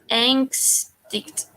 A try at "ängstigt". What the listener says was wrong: Not tickt, it's ticht. Ängstigt.